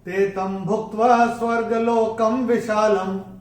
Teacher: और ल के ऊपर जो अनुस्वार आ रहा है चरण की समाप्ति पे आ रहा है, तो चरण की समाप्ति पे अनुस्वार आएगा तो उसका उच्चारण केवल और केवल म ही होगा।